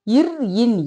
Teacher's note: இவை மேல்வாய் நாக்கின் நுனி மிகவும் பொருந்துவதால் பிறக்கின்றன